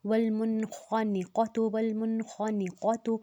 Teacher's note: والمنخنقۃ، اب یہاں پر بھی ہم نے نون پہ جزم ہے، آگے خا آ گیا ہے تو ہم نے اس پہ غنہ نہیں کرنا، والمنخنقۃ، والمنخنقۃ، خا کو موٹا رکھنا ہے، قاف کو بھی موٹا رکھنا ہے، والمنخنقۃ، کسی بھی حرف کو ہم نے لمبا نہیں کرنا۔